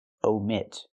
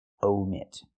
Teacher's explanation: Use a long O like no and go.